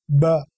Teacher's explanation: जब voicing release के साथ ही आती है तो इसको कहते हैं वॉइस साउंड